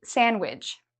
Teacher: So the D is silent.